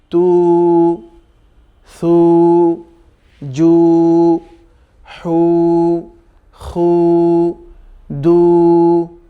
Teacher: উল্টো পেশ যখন আসবে তখন ওই পেশের যে সাউন্ড আছে উ সাউন্ড, ওই উ সাউন্ডটা দীর্ঘ হবে